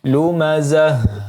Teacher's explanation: ta marbutah di sini, maka ketika dia sukun dibaca menjadi ha, ya, ha besar.